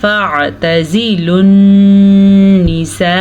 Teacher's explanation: عین کو واضح کریں اور عین کے اوپر ساکن ہے تو ساکن ہی پڑھنا ہے۔